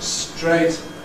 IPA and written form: streɪt (straight)